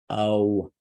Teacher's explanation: it's complex because it starts with oh and it moves into what sounds like a w